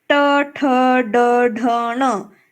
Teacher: उसके बाद ट ठ ड ढ ण जब हम बोलते हैं तो तालु के थोड़ा पीछे जीभ का स्पर्श होता है, जिह्वा का स्पर्श होता है, जो भाग होता है मूर्धा का, तो उसे कहते हैं मूर्धन्य